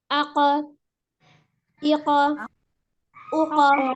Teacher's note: Jadi huruf qaf ketika dia sukun maka dia harus dipantulkan. Ya, ada suara pantulannya.